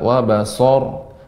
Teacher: huruf sin tetap dia tipis ya, tidak berubah jadi tebal.